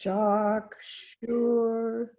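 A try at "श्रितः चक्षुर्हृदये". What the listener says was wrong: The notes were in reverse. Chakshur So So from Shritaha, Shritaha Chakshur Hridaye.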